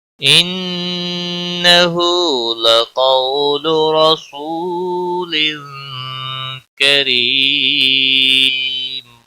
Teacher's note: وقف کی صورت میں میم ساکن پڑھا جائے گا، اور ملانے کی صورت میں اخفاء حقیقی ہوگا، گنہ کے ساتھ پڑھیں گے